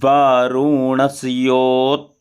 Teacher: double व है तो इसलिए थोड़ा सा होठ को दबा कर बोलना